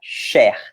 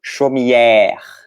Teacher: tanto o E com chapéuzinho quanto o E com acento grave tem o som de E, o E aberto em francês.